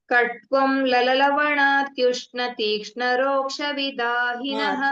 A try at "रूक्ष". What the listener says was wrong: If you are telling Roksha, it's Ruksha. Ruksha.